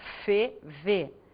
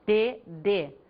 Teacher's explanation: O que muda é o que nós chamamos de traço de sonoridade. Ou seja, refere-se aí à vibração das pregas vocais.